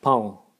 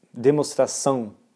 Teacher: And then of course you have the nasal vowels, like pão for bread